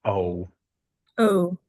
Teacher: The e au is a French vowel. We just pronounce it as a long o.